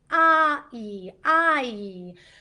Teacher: So there's some movement with I. It actually it consists of ah plus e. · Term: diphthong vowel